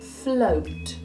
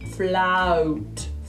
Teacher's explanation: So in words where in RP you might say this sound, O. In Birmingham we say ow. Ow. It's wider. It's actually a lot closer to London.